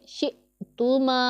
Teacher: اور یا ساکن ہے، اس سے پہلے زبر ہے تو یا لین ہے، اسے ہم نرمی کے ساتھ ادا کریں گے، فا میں سیٹی کی آواز نہیں نکالیں گے، اس بات کا اچھے طریقے سے دھیان رکھنا ہے۔ حمزہ ساکن ہے، اسے جھٹکے کے ساتھ ادا کریں گے